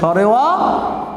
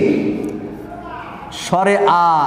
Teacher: সরাসরি আমাদের এই কণ্ঠ থেকে উচ্চারিত হয়েছে বা জিহ্বার মূল থেকে উচ্চারিত হয়েছে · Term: কণ্ঠস্বর বর্ণ